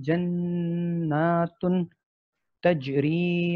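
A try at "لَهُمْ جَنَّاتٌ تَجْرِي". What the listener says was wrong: جناتن اس کا اخفا نہیں ہوا، جناتن تجری، کیونکہ یہ تنوین ہے نا، تنوین اس کا اصل میں اخفا ہے نا.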